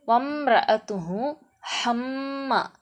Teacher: இங்கே வந்து மீம் சத்து பெற்று வந்திருக்கு, இந்த மீமை அழுத்திய குன்னாவோடு ஓதணும்